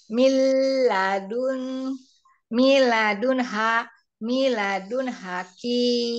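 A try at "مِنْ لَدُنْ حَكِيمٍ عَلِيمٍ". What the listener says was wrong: Milnya ditahan. Itu ada lam sukun ya. Langsung lam tahdid ke langsung ke lamnya. Mil. Mil ladun hakimin alim. Cuma hati-hati di panjang pendeknya ya, Om ya. Banyak pertambahan huruf.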